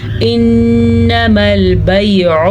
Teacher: نون پہ شد ہے تو غنہ لازمی ہے